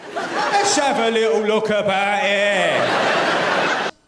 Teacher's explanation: Okay, so I did notice the glottal. He does glottal T's a lot, like about.